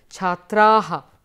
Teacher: it's a nice open mouth with an aspirated sound at the end